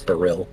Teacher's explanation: I think the emphasis would probably be on the second syllable.